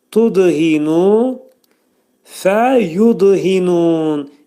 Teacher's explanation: Dəl hərfi burada qəlqələdir. Çünki sükundan gəldi.